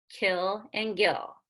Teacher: We have K and G, kill and gill, which is using the back of the tongue, and the soft palate, which is the back of the top of the mouth